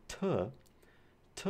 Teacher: T is voiceless, it is alveolar, and it is a stop. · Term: voiceless alveolar stop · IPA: [t]